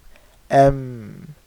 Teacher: Mim is pronounced from the wet portion of the lips touching.